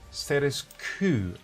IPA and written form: ˌsteɪ.təs ˈkwoʊ (Status quo)